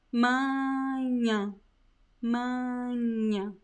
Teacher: The first A is nasalized because of the letter N that comes right after. And the last A is nasalized because of the tilde. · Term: nasal sounds